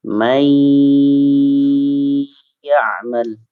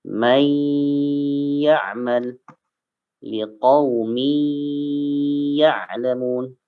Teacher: Nun sukun atau tanwin, fathah, kasrah, dhammah bertemu dengan salah satu huruf idgham bi gunnah, ya, maka dibacanya masuk dan dengung. Masuk dan dengung. Contohnya may ya'mal, may ditahan.